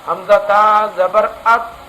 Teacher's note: تو اگر ہم نے اس میں اس قلقلہ کیا، اس کو ہلایا، حمزہ تا زبر ات اس طرح پڑھا تو یہ غلط ہو جائے گا. اس تا کو ہلانا نہیں ہے. حمزہ تا زبر ات، اس کے مخرج میں آواز کو پوری طرح پر روک لینا ہے